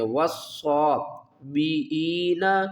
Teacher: ان الذین، ان الذین آمنوا، والذین ہادوا، والنصارى والصابئین، من آمن باللہ، صاد کو ہم پر پڑھیں گے، واو کو صاد کے ساتھ ملائیں گے اور صاد کو پر پڑھیں گے۔ والصابئین، ہم نے حمزہ کو پڑھنا ہے، عین کو نہیں پڑھنا۔